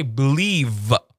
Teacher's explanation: When we say believe, we have now substituted that f for a v. Okay. The f is gone and now it's a v.